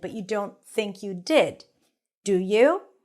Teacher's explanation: this is the intonation that you usually hear a statement with falling intonation